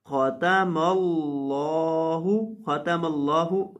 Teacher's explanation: لفظ اللہ کے آخر پہ جو ہا ہے اس کو آپ نے کلیئر پڑھنا ہے، واضح پڑھنا ہے